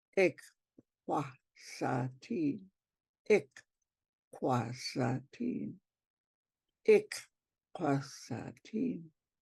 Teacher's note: don't forget to move that K back to the back of your throat when you say the second K. And purse your lips around that K.